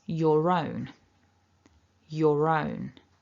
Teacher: because your ends in this or, and then we've got a vowel immediately afterwards, we need to activate that linking R so it becomes your own.